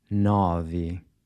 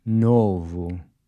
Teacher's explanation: Nove. Once again, this is open. Nove. Novo. This O is a closed O.